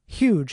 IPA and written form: hjudʒ (huge)